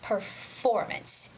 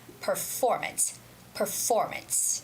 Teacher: you have to figure out the right stress for the word, which is performance. It goes on FOR. Performance.